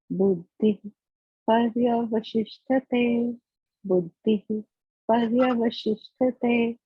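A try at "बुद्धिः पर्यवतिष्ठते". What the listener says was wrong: No, you see, you have to say if, right? Because pa is there. So visarga before that, the pa becomes half matra. So it becomes if, right? Buddhif paryavatishthate.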